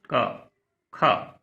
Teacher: जिन ध्वनियों के उच्चारण में स्वरतंत्रियों में कंपन नहीं होता, गूंज उत्पन्न नहीं होती, उन्हें अघोष कहते हैं।